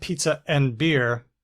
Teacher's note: Now I said pizza and beer, and I separated it with a little pop, a little glottal stop